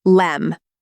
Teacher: So instead of pausing to pronounce both clearly, the tongue slides straight through and let me collapses into lem.